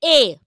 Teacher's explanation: অর্থাৎ জীব সামনের দিকে এখনো থাকছে ঠোঁটটা প্রসারিত থাকছে এবার উচ্চতা জীব তার সর্বোচ্চ অবস্থান থেকে কিছুটা নিচের দিকে নামছে সেজন্য উচ্চমধ্য আর মুখের ভেতরকার যে পুরোবদ্ধ জায়গাটা অল্প একটু তার মধ্যে স্থান